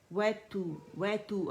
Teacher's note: اچھا یہاں پہ واو باریک ہے اور کمپلیٹ رولنگ سے ادا ہوگا لپس کی، ٹھیک ہے۔ اور تا جو ہے یہ بھی باریک ہے، اس کو ہم ضمہ دیں گے، پیش دیں گے تو رولنگ ہوگی لپس کی۔ وَتُو اور باریک ہے، پہلے مخرج پکڑیں گے اور پھر اس کو ہم نے رولنگ دینی۔